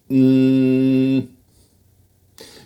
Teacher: With the n sound, you close off the air in your mouth, but you let it come through your nose.